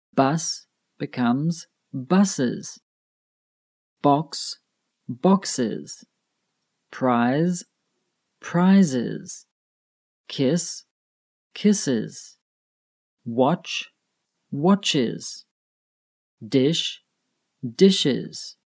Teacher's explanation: So if the word ends in a sibilent sound then you add the is sound to the end.